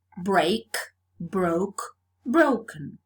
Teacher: So the diphthong A, the face, changed to O, to the goat, in both forms. So there is vowel alternation.